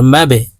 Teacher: ধাক্কা দিয়ে উচ্চারণ করতে হবে কারণ বা কল কলার হরফ